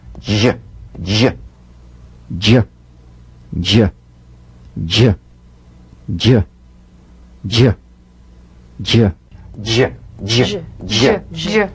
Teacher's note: is the voic tongue point plus tongue blade s sound consonant It's a combination of the D drum beat and the zh so place the tongue on the upper gum Ridge for the · a combination of the D drum beat and the zh so place the tongue on the upper gum Ridge for the d d d then let the tip peel down for the zh resonance use a light quick energetic staccato treatment and feel a voiced